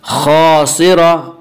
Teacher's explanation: खासिरा अलिफ मद्दा, अलिफ हमेशा मद्दा होता है, अलिफ से पहले ज़बर होता है, अलिफ मद्दा को एक अलिफ के बराबर खींच कर पढ़ेंगे।